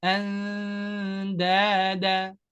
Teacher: ujung lidah bertemu dengan pangkal gigi seri bagian atas. Tapi nggak nempel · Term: dengung ikhfa